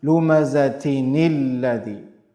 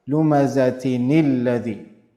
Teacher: And the letter that is coming after tanween in the next ayah is lam, right? So tanween is merging into lam. Idgham is happening.